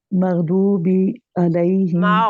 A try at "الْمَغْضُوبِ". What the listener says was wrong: مغضوبی بس بی نہیں ہے